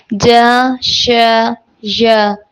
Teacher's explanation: زبان کا بیچ جب اوپر تالو کے ساتھ لگے اس سے جا ش ژ ادا ہوتے ہیں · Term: حروف شجریہ